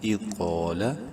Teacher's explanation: bold کرنا ہے، ایک الف برابر لمبا کرنا ہے قاف کو